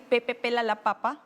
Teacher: cuando hacemos la p normalmente juntamos los labios y botamos toda la fuerza de la voz